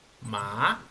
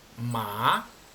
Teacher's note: el segundo tono es un sonido ascendente comienza en un tono normal pero aumenta su gravedad y termina más alto a como comenzó